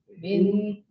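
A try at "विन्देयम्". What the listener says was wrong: కొంచెం அந்த மாத்திரா దీర్ఘ మాత్ర కొంచెం కొరచుకోండి. I'll mock you so that you know the difference. What is right and what is wrong. How you are chanting and how it should be chanted. Vindeyam la அவ்வளவுதான் வரணும். உங்களோட என்ன வருதுன்னா வெந்தேயம் அப்படி ஆறுது.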